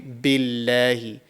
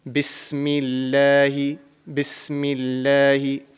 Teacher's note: So if the previous mutaharrik letter bears a kasra, then it will be pronounced with a thin and empty sound.